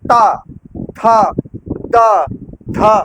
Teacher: देखिए जीभ आपकी है ऊपर वाले दांत के नीचे जाकर के एकदम चिपक जा रही है। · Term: दंत्य